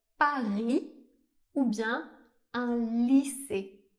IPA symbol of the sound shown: i